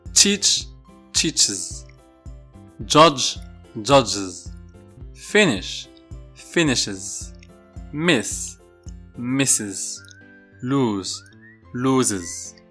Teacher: after a sibilant sound we need to add another syllable